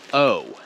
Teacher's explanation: the english version o is much longer it it's almost like we're stretching it out oh i think